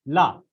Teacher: मतलब जैसे आप ला बोलोगे, ला, तो ला आप बोल रहे हो तो जीभ का जो सामने वाला भाग है वह आपके मसूड़ों से स्पर्श कर ले रहा है, और जो प्राणवायु निकल रही है वो साइड से बाहर निकल रही है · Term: पार्श्विक व्यंजन